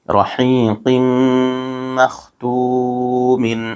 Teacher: یہاں نون ساکن کے بعد دوسرے کلمے میں حروف یرملون میں سے میم آ رہا ہے، اس لیے یہاں ادغام مع الغنہ ہوگا، یہاں غن کے ساتھ ملا کر پڑھیں گے۔